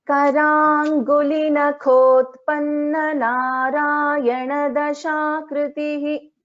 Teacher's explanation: This kha is a mahaprana.